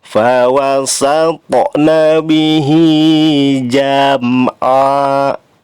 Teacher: Di situ ada mim mati ya, mim sukun bertemu dengan huruf ain, maka harus dibaca izhar syafawi. Jadi jangan dibaca lama atau jangan didengungkan. Fawasatna bihi jam'a, langsung ya.